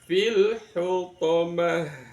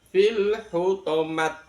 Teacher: ta marbuto kalau dibaca waqof ber bunyi ha